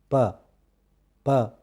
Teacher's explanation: مثال کے طور پر غور کیجئے گا میرے ہونٹوں پہ اور میرے ہاتھ پہ کہ پہلے ہونٹ بند ہے اور اس کے بعد جب وہ کھلے تو آواز نکلی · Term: پلوزیوز